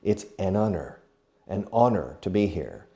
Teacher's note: It's an H, but it's silent. So the sound of honest or honor or honorable is the sound of a vowel, although the word starts with a consonant.